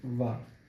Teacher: व आप बोलिए व। आपका दांत नीचे वाले होठों के ठीक ऊपर आकर रुकेगा। उसके बाद उठेगा।